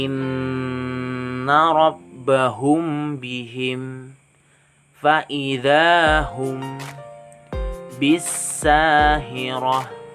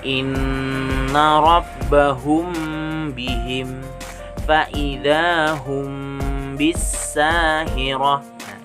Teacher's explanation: dengan huruf ba nah tuh maka hukum bacaannya kVA syafawi dan cara membacanya itu samar-samar di bibir dan berdengung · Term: ikhfa syafawi